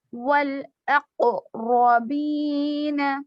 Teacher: را پہ زبر ہے تو یہاں پر را کو پر پڑھیں گے